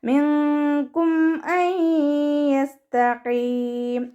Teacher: നൂൻ സാക്കിനയ്ക്ക് ശേഷം ഇദാം ബിഉന്നയുടെ അക്ഷരമായിട്ടുള്ള യ വന്നു. നൂൻ സാക്കിനയെ യായിലേക്ക് ലയിപ്പിച്ചിട്ട് ഉണ്ണയോടുകൂടി ഉച്ചരിച്ച് കൊടുക്കുക.